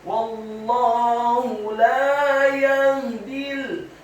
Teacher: Wallahu, huruf wawunya dibaca fathah, cukup 1 harokat saja karena setelahnya langsung disambung ke huruf lam yang tasydid dan fathah 2 harokat karena harokatnya tegak pada kata Allah. Dan huruf ha pada kata Allah dibaca tafkhim tebal dhammah 1 harokat.